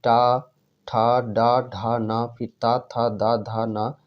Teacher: ठीक उसी प्रकार और अल्प प्राण और महाप्राण में बात करते हैं, तो पहला अल्प प्राण, ये अल्प प्राण, फिर ये महाप्राण, फिर अल्प प्राण, फिर महाप्राण, फिर अल्प प्राण, यानी कि ये अल्टरनेट होता है। पहले अल्प प्राण, फिर महाप्राण, फिर अल्प प्राण, फिर महाप्राण, फिर अल्प प्राण।